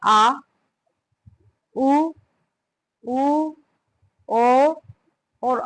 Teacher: पश्य स्वर जो जीभ के पीछे वाले भाग से बोले जाते हैं